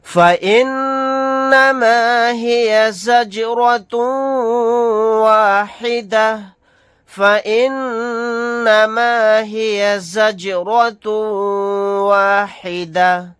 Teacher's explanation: نون مشدد ہے، یہاں پر غنہ کر کے پڑھیں گے. یہاں پر جیم ساکن ہے، یہاں پر قلقلہ کر کے پڑھیں گے